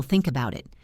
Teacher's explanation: The th connects to the vowel. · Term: connected speech